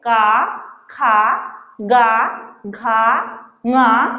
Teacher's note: जब हम इन वर्डों का उच्चारण करते हैं तो हमारा कंठ, यहाँ कंठ में झनकार होता है, इसलिए का वर्ग का उच्चारण स्थान कंठ होता है